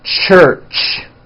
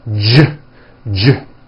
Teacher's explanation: if you take this CH sound and you keep everything in your mouth the same, you just add voicing, it becomes an American J sound. J, j. CH, ch, unvoiced, J voiced.